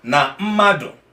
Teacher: When I'm pronouncing as a mado, my two lips will close.